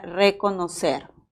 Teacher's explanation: es un vibrante simple porque también hay vibrante múltiple